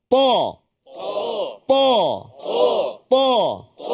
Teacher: Tempat dia keluar dia sama, sifat dia berbeza. Huruf ta dia ada sifat isti'la, dia ada itbaq. Maknanya bila kita sebut tu dia terangkat lidah kita.